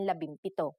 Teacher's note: If a P follows the NG connector, the NG becomes an M